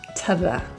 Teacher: Notice to and the are pronounced with schwas. They're reduced and the vowel is almost an to the.